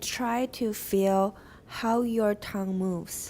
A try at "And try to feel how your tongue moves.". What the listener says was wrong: perfect timing very nice timing good